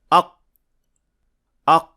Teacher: when we try to pronounce qaf but only performing the first action, so just the stoppage of air, it would sound like this. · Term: without Qalqalah